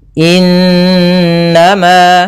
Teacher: Cara membacanya, suara n-nya ditahan 2 harokat. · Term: bacaan gunnah